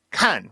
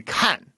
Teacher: fourth tone starts at a similar starting point to first tone. It just falls from there. And it's almost like people never get to the falling part.